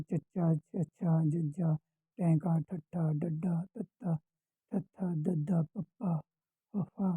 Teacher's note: ਪਹਿਲਾਂ ਇੱਕ ਵਾਰੀ ਹਵਾ ਰੋਕੀ ਜਾਂਦੀ ਹੈ ਫਿਰ ਛੱਡੀ ਜਾਂਦੀ ਹੈ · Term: ਡਕਵੇਂ ਵਿਅੰਜਨ